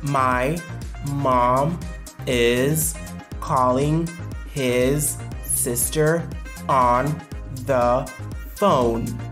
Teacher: l'accentuation sera mise sur mom qui va être bien prononcé, calling qui va être bien prononcé, sister qui va être bien prononcé, a phone. My, is, his, on, the sont des mots qui vont être engloutis. · My, is, his, on, the sont des mots qui vont être engloutis. Ils seront prononcés rapidement. On va glide over. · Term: reduced